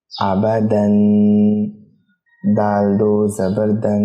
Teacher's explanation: اس میں دال پر غنہ کر رہا ہوں، ناک میں آواز لے جا رہا ہوں اور ناک میں آواز لے جانے کے بعد اسے روک رہا ہوں